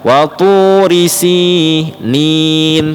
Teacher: Yang benar watu risi ya, ri-nya cepat, si-nya yang dipanjangkan.